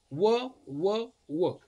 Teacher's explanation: त्यानंतर वर्ण आहे दंत ओष्ठ्य. दंत आणि ओठ, दंत आणि ओठ यांचा उपयोग करून जे वर्ण उच्चारला जातो तो एकमेव आहे, तो आहे व.